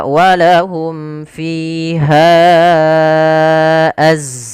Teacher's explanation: Pada dasarnya ha itu dua harakat. Karena datang setelahnya huruf hamzah maka menjadi panjangnya empat harakat atau lima harakat. Maka mad jaiz munfasil terjadi apabila ada mad thbi'i bertemu dengan huruf hamzah dan hamzah tersebut di lain kata maka ia kita namakan dengan mad jaz munfasil yang kita panjangkan empat harakat atau lima harakat.